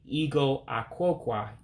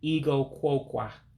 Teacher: I'm dropping the A in Ah-Kwoe-Kwau because you have two words that come together. In Igbo, you typically drop a vowel.